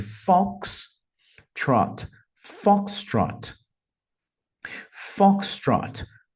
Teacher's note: para aviação vai ser Fox Trot percebam que a pronúncia né Tem duas sílabas e a primeira é a mais forte